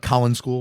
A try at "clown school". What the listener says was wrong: there's just a slight space between the C and the L, you're adding a vowel.